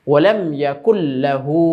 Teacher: তো আমরা নুন সাকিনের পরে লাম ঈদগামের হরফ আসার কারণে লামে তাজদিদ দিয়ে গুন্না ছাড়া মিলিয়ে পড়ব। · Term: ঈদগামে বেলা গুন্না